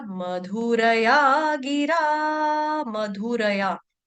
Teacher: तो मधुरया में क्या होगा, मधुरया में र जो है वो आपका पूर्ण है। पूरे र का इसमें उच्चारण स्पष्ट रूप से आना चाहिए